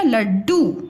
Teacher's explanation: अब देखो ल का पूरा स्वर, पूरा उच्चारण सुनाई दे रहा है और डू का सुनाई दे रहा है, और जो ये बीच का ड है इसके उच्चारण में समय कम लग रहा है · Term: आधा